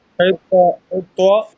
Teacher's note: حطة تو منہ بھر کے پڑھنا ہے اور دوسری تا جو ہے وہ باریک پڑھنا ہے. حطة حطة نغفر لكم سپیڈ کو کم کرے اور پڑھے پھر صحیح ہو جائے گا، اور آہستہ آہستہ پریکٹس کرتے ہوئے سپیڈ بڑھاتے جائیے.